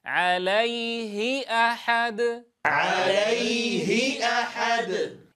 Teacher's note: انتبهوا في الهاء المكسورة ألا يخالط صوتها غنة